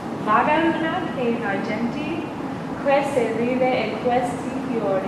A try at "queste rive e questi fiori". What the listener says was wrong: And you got to remember those R's. You were doing great. Don't neglect them.